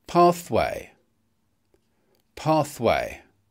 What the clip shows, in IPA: ˈpɑːθ.weɪ